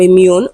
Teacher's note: immune is stressed on the second syllable